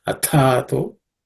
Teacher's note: the Tha is the second letter in the Tha Varga, so it has to be aspirated.